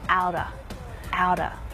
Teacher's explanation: when spoken naturally you'll hear outer outer out of becomes outer